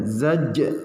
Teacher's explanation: Nah, ini qalqalah sugro, zaj. Nah, memadukan zai dengan jim, ya, za dengan jim, zaj. Nah, jadi memadukannya seperti itu, zaj, ya, zaj.